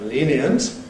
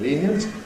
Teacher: They both involve a syllabic sound becoming non-syllabic. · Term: compression